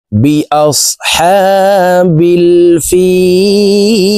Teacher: ফি এখানে 3 আলিফ টেনে লামকে সাকিন করতে হবে, কারণ মদের হরফের বামের হরফে ওয়াকফ হইলে মধ্যে আরজি 3 আলিফ টেনিয়া পড়িতে হয়।